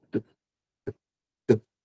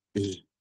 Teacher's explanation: O T ele é surdo, o G ele é sonoro